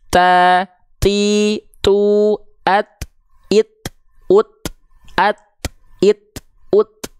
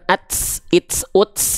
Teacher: enggak ada bunyi desisnya ya enggak ada ya cuman percikan nafas bukan desis